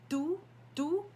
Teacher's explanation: Rather than saying T, you're almost saying a D, tu, but there's still a hint of T in there. It's called a dental T.